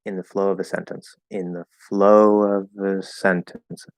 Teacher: We even usually drop the V, and it's usually just a little schwa sound